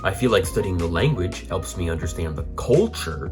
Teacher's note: because we're emphasizing the word culture as contrasted with the word language